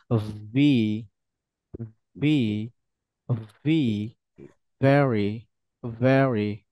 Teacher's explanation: ঠোঁটের পেট উপরের দাঁতের সাথে লাগবে এবং হালকা ব্রাবে বেড হবে একটু কাঁপাকাপি করবে হালকা এবং হালকা বাতাস বের হবে